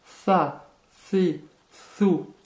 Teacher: Première difficulté, le tha. C'est un S très léger que vous prononcez en sortant légèrement la langue.